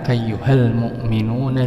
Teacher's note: Ini ada alif lam lagi, alif lam qamariyah. Maka L-nya kedengaran